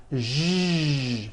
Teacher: To produce this sound, first make a sh sound, and then you add voicing. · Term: voiced SH sound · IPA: ʒ